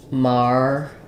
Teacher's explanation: Then we flap this T. It's going to sound a little bit more like a D.